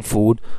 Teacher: it is the high back vowel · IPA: uː